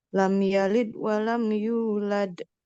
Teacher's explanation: Di akhirnya ada huruf dal dan kita berhenti, maka harus ada qalqalah, pantulan dari huruf dal.